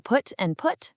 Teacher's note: In the south of England, words like foot and strut use two completely distinct vowel sounds. But in the north, those vowels merge right together, meaning put and put actually sound exactly identical. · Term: foot-strut split